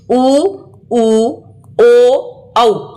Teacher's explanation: जिन स्वरों के उच्चारण में होठ या ओट वृताकार यानी गोल होते हैं उन्हें वृताकार अथवा वृत मुखी भी कहते हैं जैसे उ ऊ